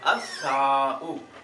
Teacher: الف لام کے بعد سا آیا، یہ شمسیہ میں سے ہے، اس نے لام کو بھی سا کیا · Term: ادغام